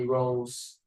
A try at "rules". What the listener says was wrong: Okay, it's much better, but the way that you pronounce the word rule is very weird. We don't say row or rule. No, this is U and L. Rule. Rule. This is U. You say U, and then you are gonna curve your tongue like this. The L letter.